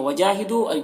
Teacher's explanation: وجاہدو یا میں الف مدہ ہے اور دو میں واو مدہ ہے، دونوں کو 1 الف کے برابر کھینچیں گے